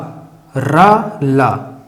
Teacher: इनका जो उच्चारण होता है वो मसूढ़ों से होता है। मसूढ़े यानी कि हमारे दांत के पीछे का भाग, जो भी वो मसूढ़ा होता है, वहां से इनका उच्चारण होता है। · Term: दंतमूल